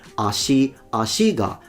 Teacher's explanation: pointing to the fact that the particle goes down because it's a odaka pattern